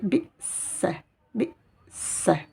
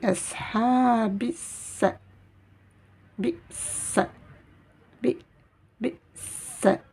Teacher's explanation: Je lis directement avec la lettre Sin et non pas avec la lettre Lam puisqu'il n'y a pas de soukoun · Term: shidda